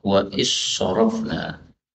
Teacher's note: zal ketemu sad, ini boleh idgham